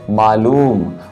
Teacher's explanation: उसी तरीके से मालूम अगर पढ़ेंगे तो यहाँ पर ला और ऊ की जो मात्रा है यहाँ पर हम लोग थोड़ा ला पर थोड़ा सा बल देंगे